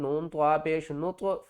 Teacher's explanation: طوا بھی حروف قلقلہ میں سے ہے، یہاں پر بھی قلقلہ کریں گے